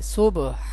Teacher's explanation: یہ حروف قلقلہ میں سے با ہے، اس کو ہلا کر پڑھیں گے